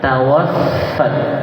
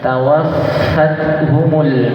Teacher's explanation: Penekanan dan ada fa tasdid yang ada hembusan nafas.